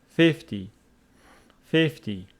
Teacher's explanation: pronounced 50 with the stress on the first syllable